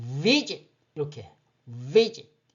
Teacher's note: 모음이 두 개라 이 음절어이고 앞쪽에 강세가 있다. 첫 음절에 강세가 있다.